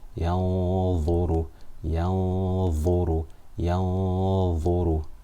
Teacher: So my tongue is not touching the top of my mouth. I'm not pronouncing the Noon. I'm hiding it. I'm concealing it. Because Dha is a full mouth letter, this Ghunna for 2 harakat is full mouth. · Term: Ikhfa